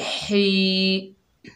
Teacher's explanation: हा के नीचे ज़ेर है, आगे या साकिन है, हा को या से मिलाकर पढ़ेंगे और या जो है मद्दा है, इसको एक अलिफ की मिकदार खींच कर पढ़ेंगे। हा हलक के दरमियान से अदा करेंगे